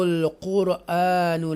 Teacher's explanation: قرآن را کو پور پڑھیں گے کیونکہ اس سے پہلے بولڈ لیٹر ہے